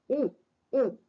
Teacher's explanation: उ उ, यह करते समय हमारे 2 ओठों का उपयोग हो जाता है, इसलिए उसे ओष्ठ कहा जाता है।